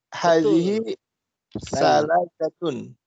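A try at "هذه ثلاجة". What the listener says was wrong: Kita ingatnya salju aja. Salju itu as-salju pakai tha dalam bahasa Arab. Hadhihi thalajatun. Hadhihi thalajatun.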